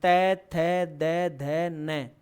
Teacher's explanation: आपकी जीभ दांतों से टकराई तो त वर्ग दंत्य वर्ण